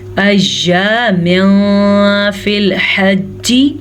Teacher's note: تنوین کے بعد فا ہے جو کہ حروف اخفا میں سے ہے تو ہم یہاں پہ اخفا کا قاعدہ کریں گے